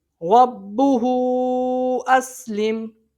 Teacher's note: حروف مدہ اس کے بعد حمزہ دوسرے کلمے میں مد منفصل کو 2 یا 2.5 الف کے برابر کھینچ کے پڑھا جاتا ہے۔ رَبُّهُ أَسْلِمْ، اچھا یہاں پر وقف نہیں کرنا، ٹھیک ہے۔